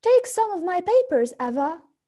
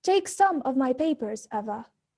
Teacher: "Take some of my papers, Eva." "Take some of my papers, Eva." Again, "Take some of my papers, Eva." "Take some of my papers, Eva." Notice that in the first case, Suggestion needs a rising intonation. This latter makes the utterance sound friendly. While in the second case, command needs fallen intonation. It makes the utterance sound less friendly and more imposing.